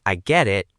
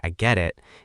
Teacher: If you say, I get it, with a happy, rising tone, it means you understand and you're happy.